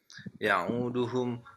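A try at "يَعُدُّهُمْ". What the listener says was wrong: Ya'udduhum tasydid dalnya.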